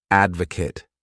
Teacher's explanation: This word has three syllables and the stress is on that first syllable.